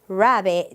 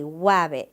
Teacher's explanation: they replace the R for the W all the time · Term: gliding